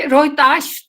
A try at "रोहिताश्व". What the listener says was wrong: रोहिताश्व, वह भी क्लियर बोलना है। वो नहीं बोला ठीक से, वो आधा छोड़ गया। बिल्कुल स्पष्ट बोलना जरूरी होता है।